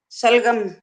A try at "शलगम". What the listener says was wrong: हाँ वो स बोला जा रहा है ना, इसीलिए तो गलती हो रही है बार बार।